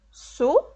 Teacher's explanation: Eu separo a palavra açúcar da seguinte forma: açúcar. A sílaba tônica está na penúltima sílaba, na sílaba su. Se é a penúltima sílaba, essa palavra é paroxítona.